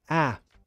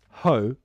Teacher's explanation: if the vowel sound is an ah you have a wider mouth ah but ho your mouth is smaller so it feels less strong